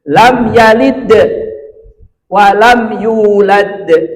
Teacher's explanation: Kalau kubra berarti pantulannya mantap ya, kuat itu lam yalid walam yulad. Dal yang pertama memantul, dal yang kedua juga memantul. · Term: qalqalah